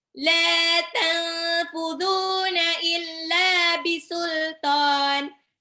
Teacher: Ikhfa dibaca samar, nunnya hampir lompat mau ke fa, dibaca samar, tahan 2 sampai 3 harokat.